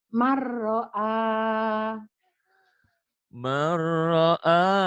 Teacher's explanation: nun mati atau tanwin ketemu ro. Idgom dimasukkan dileburkan tapi tanpa dengung, tanpa ditahan.